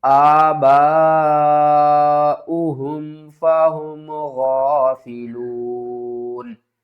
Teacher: وقف کی صورت میں نون کو ساکن کریں گے